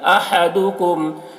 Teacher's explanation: ہا کو حلق سے ادا کریں گے